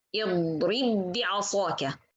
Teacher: Two ba instead, and no one of them is with qalqala. One sakin, one mutaharrik, we merge between them, we make idgham between them, and we read it together. اضرب بعصاك.